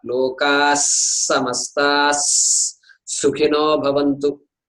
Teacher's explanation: So lokas samasta, there are two S's there, two sakaras there sitting next to each other. So we must emphasize the sakara